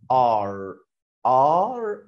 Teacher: يبقى لما يجي حرف الار بيتخن الحرف ده يخليه مفخم كده بدل ما هقول ا زي ابل وانت هقولها ا زي ما يكون واحد بطنه وجعه يا بطني تبقى اي ار في كل الكلمات هتتنطق كده ار والار خفيفه خالص كده بطرف لسانك وتوقف ما تخليش تكر معاك ار كتيره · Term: الاي ار